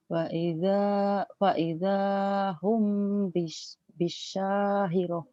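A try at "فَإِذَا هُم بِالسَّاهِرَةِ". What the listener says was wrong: Humnya bindang ikhfa safawi. kurang nyamber. Bisa kurang nyamber Kak.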